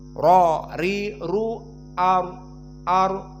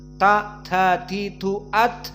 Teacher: Sifat dari ra adalah jahr. Ra ri ru ar, tidak boleh keluar seperti hams